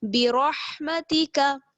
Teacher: کاف زبر کا برحمتی کا. اس میں آپ کو صرف را کو پر پڑھنا ہے، باقی سارے حروف جو ہیں وہ باریک پڑھے جائیں گے